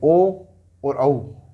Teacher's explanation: ओ को कंठोष्ठ, कंठ और ओष्ठ दोनों से बोला जाता है।